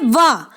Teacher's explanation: आपके ऊपर वाले दांत नीचे वाले होंठ से टकराएंगे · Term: दंतोष्ट